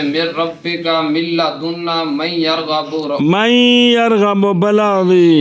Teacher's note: را اور لام میں بے غنہ اور باقی میں با غنہ